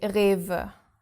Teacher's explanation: The R at the beginning is our guttural R, and then the W pronounced like a V. Like a V. Yeah, Rewe.